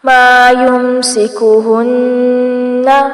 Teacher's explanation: مَا يُمْسِكُهُنَّ، نون مشدد ہے، غنہ کیا جائے گا لیکن نون کو لمبا نہیں کرنا